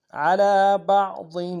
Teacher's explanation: ضاد کو موٹا ادا کریں گے، ضاد کے نیچے تنوین غنہ کریں گے